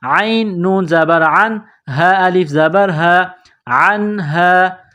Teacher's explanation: حروف حلقی ہے تو یہاں غنہ نہیں کریں گے، آواز ناک میں نہیں چھپائیں گے